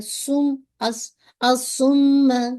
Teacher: تو آئین کو سواد کے ساتھ ایڈ کیجیے گا کیونکہ الف لام کا ادغام ہو گیا۔ سم، میم پہ آپ کو دیکھیے شد ہے تو آپ نے اس کو ہولڈ کرنا ہے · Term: میم مشدد